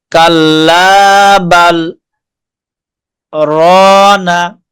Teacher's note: আমরা প্রায় এক আলিফের পরিমাণ, এক আলিফ যেমন টান দিয়ে পড়ি, প্রায় অতটুকু সময় সাক্তা করব।